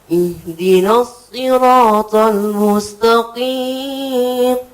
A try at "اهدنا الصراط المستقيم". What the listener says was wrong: Pokoknya lengket. Jangan keluar anginnya. Ihdinas siratal jangan keluar. Lengketkan ke langit-langit lidahnya. Bulat. Itu masih ada di ujungnya itu keluar. Tebalkan lagi. Jangan ada anginnya. Lengketkan. Tahan dulu baru. Tekan.